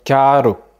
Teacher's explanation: Le R qui se trouve au milieu du mot, il va plutôt avoir un son plutôt doux